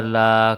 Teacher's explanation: ہا لام پیش ہل، لام کھڑا زبر لا، کھڑا زبر کو ایک الف کے برابر لمبا کیا